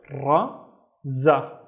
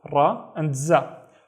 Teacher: notice that in both of these letters, the ra and the za, the tongue is vibrating. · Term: vibrations